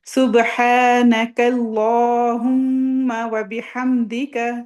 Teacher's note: اور ماں کو لمبا نہیں کرنا، میم کو ہولڈ کرنا ہے، تھوڑی دیر ناک میں غنہ کرنا